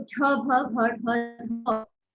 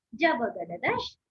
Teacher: एक तो झ भ घ ढ भारी आवाज हो जाती है, ज ब ग ड दश, ये देखिए एकदम कोमल ध्वनि आ गई